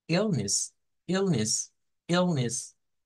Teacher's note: tenemos una sílaba tónica al principio y una sílaba weak es decir una sílaba débil al final